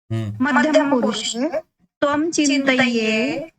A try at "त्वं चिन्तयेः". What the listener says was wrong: अत्र नाम विसर्गस्य उच्चारणं सम्यक् भवेत्। त्वं चिन्तयेः, त्वं चिन्तयेः,